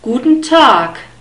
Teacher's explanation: The G is pronounced like a K. It's not such a strong K, but at least it's not a hard G sound.